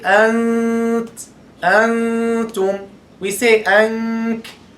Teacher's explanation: we don't pronounce the nun at all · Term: ikhfa of the nun